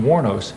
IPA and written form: ˈwɔːrnoʊs (Wuornos)